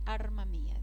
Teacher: Alma en determinadas regiones sustituyen la L por una R. Por ejemplo, los andaluces, arma mía, dicen. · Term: asimilación a distancia